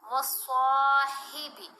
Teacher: صاد کو موٹا بھی پڑھیں گے، لمبا بھی کریں گے، حرف مدہ ہے ایک الف کی مقدار جتنا